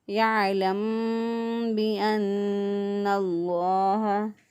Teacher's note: یعلم بأن اللہ، میم ساکن کے بعد دیکھیں اب با آ گیا، میم ساکن کے بعد جب با آ جائے تو وہاں پہ ہم نے تھوڑی دیر ہونٹوں کو بند کر کے تو پھر ہم نے ادا کرنا ہوتا ہے، گنہ کرتے ہوئے ہم نے ادا کرنا ہے اس کو، یعلم بأن اللہ۔